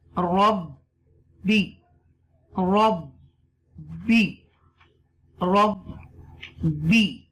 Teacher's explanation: This zabar connect with ba mushadda with zir, and this ra connect with the ba with the extra stress.